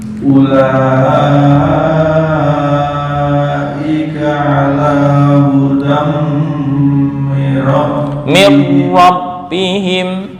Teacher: Dengung hudam mir rabbihim. Tanwin bertemu mim idgham bi gunnah, ditahan 2 sampai 3 ketukan.